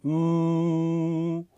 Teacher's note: closes your lips and uses the mouth and the sinus cavities as a resonating chamber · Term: nasals